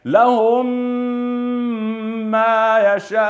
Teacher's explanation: والميم عند الميم ويسمى ادغام شفوي شفوي شفوي نحو لهم ما يشاءون لاحظوا الميم الساكنه وبعدها ميم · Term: غنه